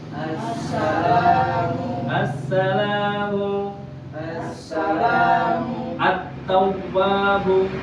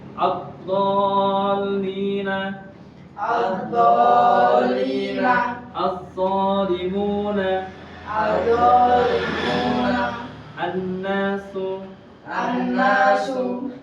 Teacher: hukumnya idgham syamsiyah alif lamnya itu tidak dibaca langsung dibaca huruf se setelahnya.